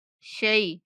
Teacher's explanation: شین کے بعد یا لین ہے تو شی شے نہیں پڑھنا شی پڑھنا ہے